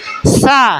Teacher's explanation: sama keluarnya tadi ya huruf Sin Shad dan Zai ya itu makhrajnya di ujung lidah bertemu dengan papan gigi seri yang bawah